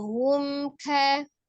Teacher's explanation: Caranya ya, sebelum mim sukun itu ada ha dhamah ya. Monyongkan ha berdhamah, kemudian kembalikan ke makhraj awalnya mimnya ya. Seperti jadi hum, tidak membaca mim sukunnya pada saat posisi monyong hu ya, tapi kembali ke makhraj mimnya hum, kembali ya. · Lalu langsung ucapkan kafnya, tidak ditahan. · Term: izhar